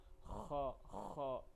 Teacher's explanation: خا کو حلق کے سب سے اوپر والے حصے سے ادا کرتے ہیں